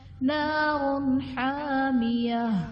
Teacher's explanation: نار حامیہ، را پر 2 پیش کی تنوین ہے، را کو پر پڑھا جائے گا، اور تنوین کے بعد حروف حلقی میں سے حا ہے تو یہاں پر اظہار کا قاعدہ ہوگا، انہیں تنوین میں ہم غنہ نہیں کریں گے